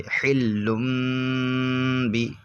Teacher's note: یعنی تنوین اور نون ساکن کو میم سے بدل دیتے ہیں، یہاں پر چھوٹے سے میم سے بدل دیں گے تنوین کو، یعنی دو پیش کو نہیں پڑھیں گے، اس کی جگہ میم کو پڑھیں گے. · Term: اقلاب